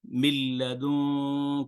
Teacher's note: من لدن کا بھی اس پہ بھی کوئی غنہ نہیں ہوا، ادغام ہوا ہے صرف. من لدن، آپ نے دیکھا نون مشدد پہ غنہ ہو رہا ہے.